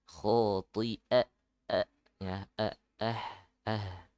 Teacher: huruf hamzah ya, jangan seperti ain